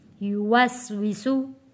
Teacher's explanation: वाव पढ़ते वक्त ये ख़ास ख्याल रखना है कि हमारे जो दांत हैं वो नीचे वाले होंठों के साथ टच ना हो, होंठ हमारे गोल होकर वाव अदा हो, युवस्विसु। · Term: होंठों को गोल करके